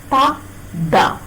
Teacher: the tip of the tongue comes into contact with the upper front teeth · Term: Malayalam ta and da